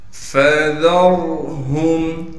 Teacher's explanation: فا کو بغیر کھینچے صاف کر کے پڑھیں گے۔ را کو نرم کر کے پڑھیں گے، یعنی دونوں دانتوں کے درمیان ہلکی سی زبان کو لے کر آئیں گے، جس سے را ادا ہوگا۔ · رال کو پھر را ساکن سے ملا دیں گے۔ را ساکن سے پہلے زبر ہونے کی وجہ سے را کو موٹا کر کے پڑھیں گے۔ ہا کو میم سے ملا دیں گے بغیر غنہ کے۔